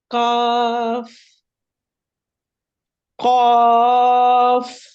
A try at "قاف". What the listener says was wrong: کاف جو پہلا ہے وہ موٹا ہو گیا تھوڑا سا. کاف، قاف.